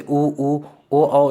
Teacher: उ, ओ, औ को बोलेंगे तो ओठ आगे की ओर निकल कर गोल रूप धारण कर लेगा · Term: वृत्तमुखी स्वर